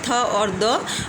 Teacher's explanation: Produce by putting द tip of द tongue between द teeth. तो इनका place क्या है, इनका प्लेस है कि हम टंग की टिप को क्या करते हैं, टीथ के बीच में रखकर, टीथ और टंग की हेल्प से ये दोनों बोले जाते हैं थ और द, और इनका क्लासिफिकेशन में इनको नाम दिया गया है इंटरडेंटल्स.